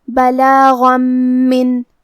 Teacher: میم حروف الادغام بغنہ میں سے ہے تو ہم یہ حکم کو غنہ اور تشدید کے ساتھ ادا کریں گے · حرف الغین کو ہم حلق کے اوپر والے حصے سے ادا کریں گے اور یہ حرف حروف تفخیم میں سے ہے تو ہمیں یہ حرف کو موٹی آواز میں پڑھنا ہے